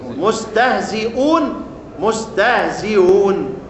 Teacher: هو بيقول الخمسة أوجه، أول حاجة التسهيل بين بين، التسهيل بين الهمز والواو